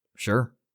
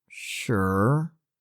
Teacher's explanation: sure is the fourth tone falling the first time and the third tone falling then rising the second time